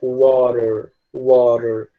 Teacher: é como se esse T ele tivesse muito mais semelhante a um R do que a um T de verdade. Então, ele se pronuncia water, como se fosse um R, né?